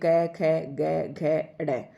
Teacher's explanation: इनमें से हर वर्ग का पहला और दूसरा जो वर्ण है ये अघोष है, और तीसरा, चौथा और पांचवा वर्ण जो है ये सघोष है। ठीक है, अघोष मतलब जिनका उच्चारण करते वक्त कोई जो है, घोष मतलब कोई किसी प्रकार की क ख मतलब प्रयत्न नहीं होता है, इनका सीधे तौर पर उच्चारण किया जाता है।